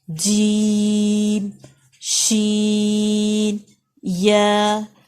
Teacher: تینوں لیٹرز کا زبان کا بالکل مڈل جو درمیان ہوتا ہے وہ ایگزیکٹلی اوپر تالوں کے ساتھ لگے گا